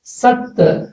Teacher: కానీ ఇక్కడ సంయుక్త అక్షరం ఉంది కనుక సత్ అంటే ఈ సాలోని తకారపు శబ్దం ఇందులో కలుస్తుంది కాబట్టి ఇది గురువు